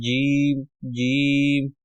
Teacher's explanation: یہ زبان کا درمیانی حصہ، یہ جب اوپر تالو کی طرف بڑھتا ہے یا ابھرتا ہے تو تب ادا ہوتا ہے